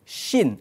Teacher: huruf shin ini makhrajnya ataupun letaknya itu di tengah-tengah lidah. Di tengah-tengah lidah dan setempat dengan huruf ya dan juga huruf jim. · Apa itu tafasyi? Tafasyi itu adalah angin yang berhamburan ketika menuturkan huruf shin.